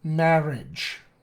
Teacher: It's just another way of expressing that R-ishness. A lot of people will use an alveolar approximant,